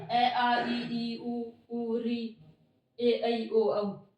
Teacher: एक बार हम अनुनासिक बोलेंगे तो ऐसे अनुस्वार लगा लेंगे, और निरनुनासिक बोलेंगे यानी बिना नाक के बोलेंगे